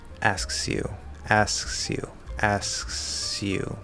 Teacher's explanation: Now it's possible, especially in faster, lazy speech, for this to kind of blend into a sh. The easy thing is just keep it an S, right? You're going to do S, lazy K, S, Y.